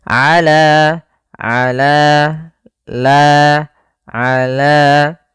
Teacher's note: fathah bertemu alif panjangnya dua harakat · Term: mad th'i